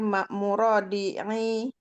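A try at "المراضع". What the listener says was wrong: Marah. Bukan murah Om. Ma.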